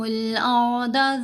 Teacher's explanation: کیونکہ یہاں را ساکن ہے، تو را ساکن کے پڑھنے کے اصول یہ ہیں، اگر را ساکن سے پہلے زبر ہے یا پیش تو را ساکن کو موٹا پڑھنا ہے. ابھی حمزہ کے اوپر زبر ہے، آگے را ساکن ہے تو را کو پر پڑھیں گے، موٹا پڑھیں گے